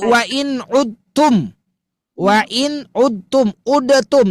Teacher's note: leburkan Bu dal dengan ta itu satu makhraj